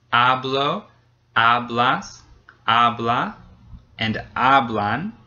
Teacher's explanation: hablo, hablas, habla, and hablan all have the same syllable stressed, the first one, the one right before the ending